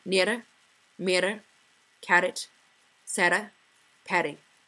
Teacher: the Scottish R is a trilled or tap sound · Scottish speakers emphasize every R sound regardless if it's a tap, trill, or retroflex